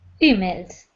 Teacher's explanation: was emails emails not emails but emails first syllable emails right the stress is not on the second syllable in emails it's on the first